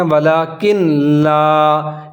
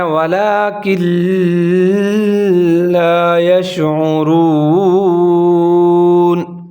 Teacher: یہاں نون بالکل ختم ہو جائے گا کیونکہ اس سے آگے لام کے اوپر شد ہے، یہاں ادغام ہو رہا ہے، اس کو ادغام تام کہا جاتا ہے۔